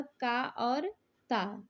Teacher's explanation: अघोष और अल्पप्राण ध्वनि है